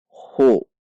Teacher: Dengan membulatkan bibir karena haknya dhummah. Khu. Bulatkan bibir.